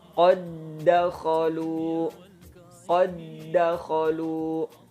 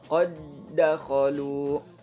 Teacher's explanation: Ada huruf dal sukun bertemu dengan dal yang berharokat fathah, maka dia tidak perlu dipantulkan, tapi langsung aja melebur ke huruf dal yang berikutnya. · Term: idgham mutamatsilain